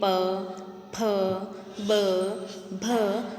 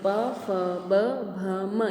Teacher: तो हमारे होठ आपस में टकराकर, एक दूसरे से टकराकर प वर्ण की उत्पत्ति करते हैं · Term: होठों के द्वारा